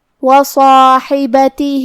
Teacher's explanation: ہا کی ادائیگی حلق کے درمیان والے حصے سے ہے اور کیونکہ اس کے نیچے زیر ہے، با پہ زبر ہے اور تا کے نیچے زیر ہے تو ہمیں یہ تینوں حرکات کو برابر سے ادا کرنا ہے. آخری میں حرف الہا کے نیچے کھڑی زیر ہے تو یہاں حکم ہے مد صلہ صغرا. ہم اپنی آواز 2 مد کے برابر لمبی کریں گے